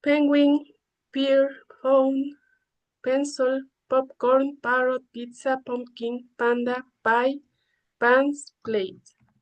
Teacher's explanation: To produce this sound, we need to keep the both lips together. The air builds up behind the lips and suddenly lips open and release the air. In this case, the vocal cords do not vibrate. · This phoneme is a consonant, is voiceless, plosive, and bilabial. As example of this phoneme, we have penguin, pear, phone, pencil, popcorn, parrot, pizza, pumpkin, panda, pie, pants, plate. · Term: consonant sounds P